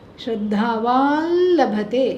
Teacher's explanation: It becomes a nasalized la.